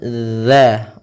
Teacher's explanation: ujung lidah menempel dengan gigi seri atas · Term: huruf Zal